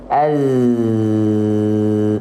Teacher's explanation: karakteristik desisnya untuk huruf Zai itu seperti sengatan lebah Nah itu harus jelas e sengatannya ya desis desis desisan lebahnya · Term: sofir